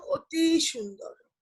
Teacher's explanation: অতি, ও তয় রস্যি না, অতয় রস্যি, কিন্তু অতি উচ্চারণ করছি ও এর মতন, কিন্তু বলছি লিখছি অ এর মতন